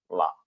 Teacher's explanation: അള്ളാ എന്ന പോലെ പറയരുത്. അള്ളാ എന്ന് പറയുമ്പോൾ നമ്മുടെ നാവിന്റെ തലപ്പ് ഭാഗം പിന്നെ മോണയിൽ ടച്ച് ചെയ്യുമ്പോഴാണ് ലാ വരുന്നത്.